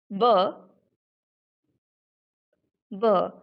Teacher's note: While uttering the sound b, b, so you can feel the vibration. Your vocal folds are vibrating while uttering the sound, and that's why this sound is voiced